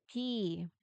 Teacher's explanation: No vibrations at all. Unvoiced.